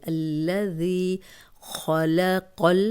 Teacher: خا موٹا پڑھنا ہے، موٹے حروف میں سے ہے، قوف موٹے حروف میں سے ہے، اب لمبا نہیں کرنا، دونوں پہ زبر ہے، لمبا نہیں کرنا۔